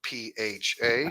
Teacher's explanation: when you see PH in Thailand, like Fifi Island, don't pronounce it like a F. It's just a P. The H is silent.